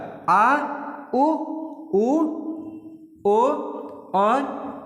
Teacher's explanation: पश्य भाग या पश्य स्वर जिसमें जीभ का पीछे वाला भाग लगा